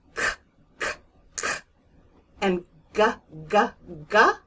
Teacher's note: I can feel where my tongue is striking the roof of my mouth in the very, very back.